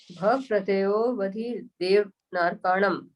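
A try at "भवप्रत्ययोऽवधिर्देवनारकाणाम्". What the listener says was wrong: हाँ, बधिर बोलना चाहिए, अलग से नहीं बोलना है।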